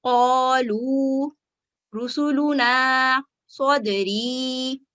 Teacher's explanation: آخر میں آگے حروف مد ہے، واو ہے، الف ہے، یا ہے، اور اس کو جب ہم وقف کریں گے تو اس میں بھی کوئی تبدیلی نہیں ہوگی